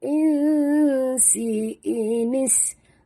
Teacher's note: nun mati bertemu sin, kita sorokkan bunyi nun ke dalam sin, ikhfa hakiki